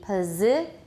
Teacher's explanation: the S is pronounced as Z, pz. And also the I is not E, it's I.